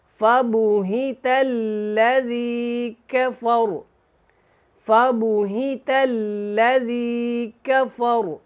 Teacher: یہاں پہ را کو ہم نے پیچھے ملایا ہے کیونکہ یہاں پہ وقف مطلق ہے، تو را کو پیچھے فا کے ساتھ ملا کے ساکن کیا، اور اس کو ہم نے موٹا پڑھنا ہے۔ وقف کی صورت میں بھی ویسے بھی را کے اوپر زبر ہے تو یہ موٹا ہوگا، اگر ہم کافا را پڑھتے پھر بھی اس کو ہم نے موٹا ہی پڑھنا تھا۔